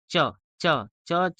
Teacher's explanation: च जो है तो वो तालु को टच कर रहा है, इसकी वजह से च जो है वो कौन सा हो गया, तालव्य अल्पप्राण कहा जाएगा।